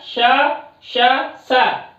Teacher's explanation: ये विवार, श्वास, अघोष, महाप्राण बाह्य प्रयत्नों के अंतर्गत उच्चारित होते हैं